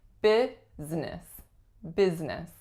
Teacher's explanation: But we totally get rid of that middle syllable and just say business